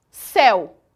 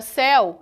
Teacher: percebam que a palavra céu a pronúncia dela é imensamente aberta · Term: ditongo aberto